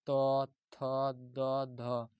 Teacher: त के जितने भी वर्ग हैं यह दंत से आवाज आता है।